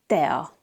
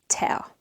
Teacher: Also notice that I'm not saying tea. The Hungarian T is not breathy like in English, it's soft. T. So we say tea and not tea.